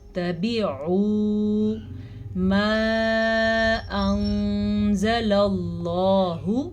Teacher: تبعوا ما انزل اللہ، مد کا دھیان رکھنا ہے۔ اس مد کی مقدار تقریباً 2 سے 2.5 سیکنڈ کے درمیان ہے